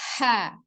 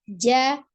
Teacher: Nah, kalau H al-hams, jimnya al-jahru.